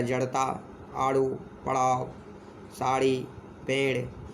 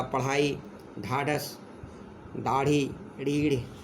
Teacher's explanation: ये हिंदी के अपने व्यंजन हैं, ये संस्कृत में नहीं थे। इन्हें जीभ और तालु को मोड़ कर बनाया जाता है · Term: हिंदी की विशेष ध्वनियाँ